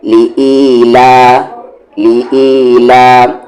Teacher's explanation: لا پر تھوڑا سا آواز کو اپ کر دینا ہے، یعنی آواز کو بلند کرنا ہے